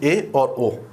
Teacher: जिन स्वरों के उच्चारण में मुख द्वार आधा बंद होता है या समृत से थोड़ा अधिक खुलता है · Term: अर्ध समृत